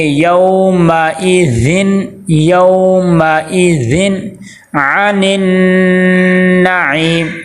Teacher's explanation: تنوین کے آگے عین حروف حلقی میں سے آ گیا تو یہاں پہ ہم کیا کریں گے، غنہ نہیں کریں گے